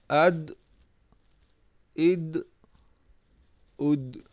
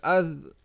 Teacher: دال بھی ایک قلقلہ ہے، اسے بھی ہم نے ہلا کر پڑھا